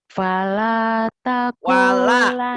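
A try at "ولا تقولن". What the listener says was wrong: Wala bukan fala.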